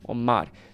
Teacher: Omar, the way I pronounce it, I make it sound like the R has like a tap sound